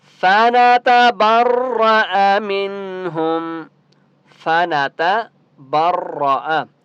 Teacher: فَنَتَبَرَّأَ مِنْهُمْ، فَنَتَبَرَّأَ، یہاں پر آپ دیکھیں کسی بھی حرف کو آپ نے لمبا نہیں کرنا، ٹھیک ہے؟ سب کے اوپر زبر ہے تو آپ نے کسی کو لمبا نہیں کرنا کیونکہ حرکات کو لمبا نہیں کرتے